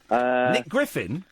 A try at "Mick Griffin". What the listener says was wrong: Mick, not Nick. Mick Griffin.